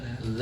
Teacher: dza itu ada di ujung lidah bertemu dengan ujung gigi seri atas